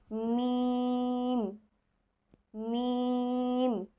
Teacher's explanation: মিম দুই ঠোঁটের শুকনা জায়গা, অর্থাৎ এই জায়গা এবং এই জায়গা একসাথে লাগবে। মিম মিম। 15 নং মাখরাজ।